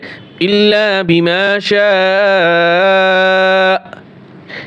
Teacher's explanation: শিন আলিফ জবর শা হামজা জবর আকফ করলে ইল্লা বিমা শা শেষে একটু শক্ত করব তাহলে হামজার উচ্চারণ হয়ে যাবে আ বলতে হবে না